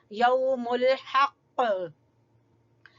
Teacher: काफ के ऊपर हम कलकला करेंगे